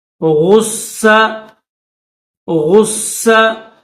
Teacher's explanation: غین کو بھی موٹا کریں گے اور صاد کو بھی موٹا کریں گے، صاد کو دبائیں گے